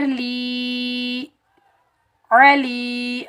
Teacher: لام کے نیچے زیر ہے، آگے یائے ساکن ہے، یہ یائے مدہ ہے، اس کو ہم ایک الف کی مقدار کھینچ کر ادا کریں گے. لام یا زیر لی، علی، عین کو ہم حلق کے درمیان سے ادا کریں گے.